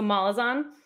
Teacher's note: I just put the emphasis on the mall instead of the zone